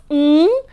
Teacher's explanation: the back of the tongue rises up to touch the soft palate and therefore ng is known as a velar nasal